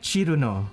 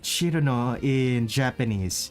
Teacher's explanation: the most obvious difference in the Japanese is probably the C actually making a CH sound. The difference in the R's.